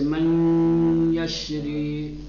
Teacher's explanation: آواز ناک سے نکلے گی، غنہ کے ساتھ پڑھیں گے